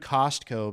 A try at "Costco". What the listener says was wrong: You don't pronounce the T.